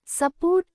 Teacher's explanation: Port మీద ఒత్తు ఉంటుంది. In support, su is pronounced lightly, not like the u name ju or the short u, and port has the stress.